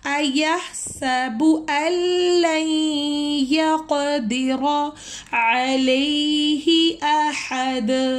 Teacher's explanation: ہم نے حمزہ کو لام سے شدہ سے ملانا ہے، نون ساکن اس میں کینسل ہو گیا ہے ، نون ساکن کو ہم نے اس میں نہیں پڑھنا، ہم